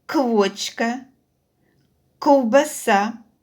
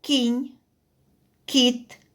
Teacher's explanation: в словах квочка ковбаса звук к промовляється твердо а в словах кінь кіт звук к промовляється м'яко